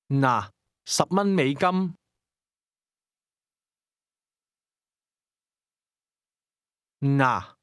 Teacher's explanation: The Cantonese word that means here or here you are is pronounced with a midfalling tone.